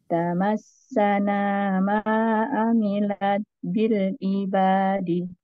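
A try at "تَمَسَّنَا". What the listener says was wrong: Iya, sip, bagus.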